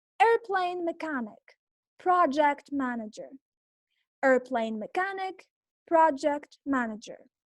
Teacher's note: In noun plus compound noun, the stress is on the first word